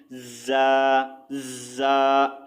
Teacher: ज़ा की आवाज़ जो है बारीक सीटी वाली सख्त होती है, ठीक है। जैसा कि ज़ा ज़ा, हल्की सी सीटी की आवाज़ भी आ रही है, ज़्यादा आपने सीटी की आवाज़ सीन की तरह नहीं निकालना है इसको, ठीक है।